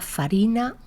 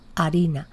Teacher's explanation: se pierde la F inicial latina y pasa a aspiración o a grado cero fonético en diversas zonas